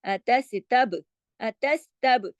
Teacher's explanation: اتستبدلون الذی اتستب، اتستب، اتس کے اندر دیکھیے سین کو تو ہم نے جماؤ کے ساتھ پڑھا، تب با کو ہم نے ہلا دیا کیونکہ با کلکلے والا ہے